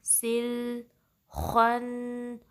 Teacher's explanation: अब सीन की कसरा को अगले लाम से मिला दे